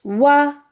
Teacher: वाव दोनों होठों की ना तमाम गोलाई से वाव अदा होता है · دونوں ہونٹوں کی نا تمام گولائی سے واو ادا ہوتا ہے، تو جب بھی واو ادا کریں گی تو پہلے آپ کا ہونٹ اس شیپ میں آئے گا اور اس کے بعد پھیل جائے گا وا، اگر زبر ہے وی، اگر زیر ہے تو بھی پہلا وو، اس میں تو چلے گول ہی رہے گا، ہے نا؟